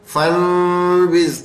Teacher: اس کے اندر جو ہے میم کی آواز آنی ہے، نون کی بالکل نہیں آنی. یہ خاص بات ہے، ہم اس کو بالکل میم میں بدل دیں گے. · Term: اقلاب